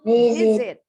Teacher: Huruf V-nya pita suara kita harus bergetar ya.